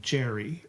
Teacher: Jerry, you stress the first syllable.